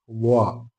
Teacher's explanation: ളാ പറയുമ്പോൾ അല്പം നാവ് വളച്ചുകൊണ്ട് ളാ, വായ നിറയെ ശബ്ദമുണ്ടാകുന്ന രൂപത്തിലാണ് ളാ പറയേണ്ടത്.